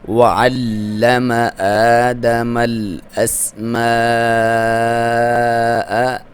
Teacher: لام کو دبا کے پڑھیں گے، شد ہے ، واو کو ہونٹوں کی گولائی سے، یہاں پہ کھڑی زبر